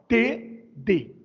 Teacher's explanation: A língua encosta na parte de trás dos dentes superiores e forma uma espécie de estalo, T, D. Uma pequena explosão. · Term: linguodentais